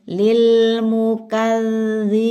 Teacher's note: Caranya lidahnya seperti itu. Ujung lidah bertemu dengan ujung gigi seri atas. Enggak terlalu kencang bukan kalau terlalu kencang kan ulron au nurro hanya disentuhkan enggak ditekan kemudian ditahan sebentar. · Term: zal